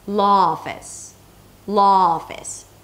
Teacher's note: The last sound is ah, and the next sound is ah as well, office. Maybe sometimes people may pronounce the first one a bit more rounded, law office, right?